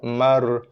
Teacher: Nun mati bertemu dengan ra. So bacaan nun diabaikan, digugurkan, dibuang. Okey. Fama terus kepada bacaan ra.